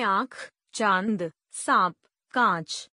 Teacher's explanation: अनुनासिक। अनुनासिक का उच्चारण नाक व गले दोनों से होता है